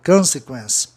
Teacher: a sílaba tônica fica no O, antes de duas consoantes do sistema comum, onde o O tem um som de O nasalado